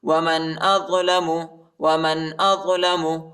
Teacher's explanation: حمزہ کو طوا کے ساتھ ملائیں گے اور طوا کو موٹا پڑھیں گے